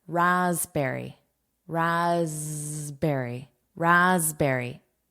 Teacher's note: This S is pronounced as a voiced sound.